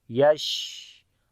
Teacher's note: Tafashi means spread the sound of sheen into your mouth and hums quality means continue your breath. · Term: tafashi quality